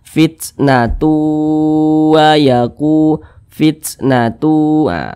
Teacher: bunyi tanwin ini dimasukkan ke huruf wau kemudian didengungkan didengungkan itu suaranya itu kita tahan kita panjangkan sejenak